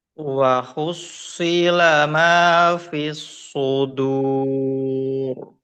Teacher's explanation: Nah, yang sad yang terakhir fis sudur ini tetap tebal, kemudian dal tipis fis sudur.